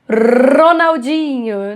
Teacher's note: Então, assim, esse R prolongado, que inclusive é uma característica muito regional, porque na verdade esse R é um R de garganta, mas o Galvão faz como um R de ponta de língua